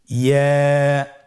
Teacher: ইয়া হরফটি উচ্চারণের ক্ষেত্রে বারিক হবে এবং 1 আলিফ টেনে পড়তে হবে।